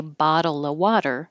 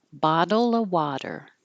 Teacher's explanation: if you say bottle of water now you don't say the v in of you just take it off and have uh so bottle water